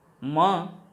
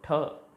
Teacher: मां का उच्चारण करते समय कंपन हो रही है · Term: घोष वर्ण